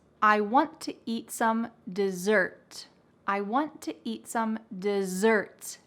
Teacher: there is emphasis on the second syllable